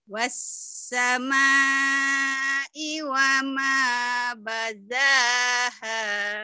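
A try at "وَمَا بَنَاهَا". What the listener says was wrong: Bukan baza, ini nun ya. Ini bukan tapi nun, banaha ya.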